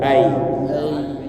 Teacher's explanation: Ai naik tengah lidah. Tapi berjarak berjarak agak jauh daripada langit-langit atas. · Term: huruf tengah lidah